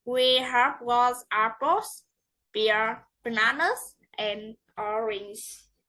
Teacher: List rising, rising, rising, and falling. Intonation fall on the last item to show that the list is finished.